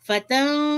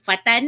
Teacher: Kum jangan dengung, jelas. Fatan, nun mati jumpa dengan qaf, ya, kena baca dengung dan memasukkan ya, ikhfa.